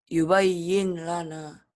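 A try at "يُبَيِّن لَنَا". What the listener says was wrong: Baca yubayyin lana salah harusnya. Lam. Huruf idgham di sini harusnya ada tasdidnya.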